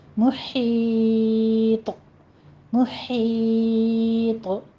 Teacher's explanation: طا ساکن ہو جائے گا تو طا ساکن پر ہمارا قلقلہ ہوتا ہے